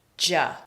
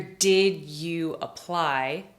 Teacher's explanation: When one word ends in D and the very next one begins with Y, that makes the ja sound